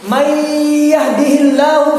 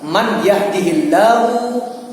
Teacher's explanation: nun mati ketemu ya, itu idgham dan berdengung